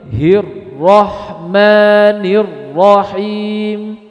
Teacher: ketika Ro bertasdid Jadi takrirnya itu lebih tersembunyi